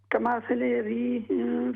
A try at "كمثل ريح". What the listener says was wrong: कमथल रीहिन हा को दुरुस्त करें